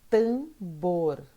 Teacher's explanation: O bor é a sílaba mais forte.